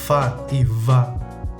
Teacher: labiodentales que llevan los dientes al labio